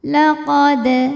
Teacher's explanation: ada hukum Qalqalah Sugra sebab ada Dal yang sukunnya sukun asli maka ini dibaca dengan pantulan yang kecil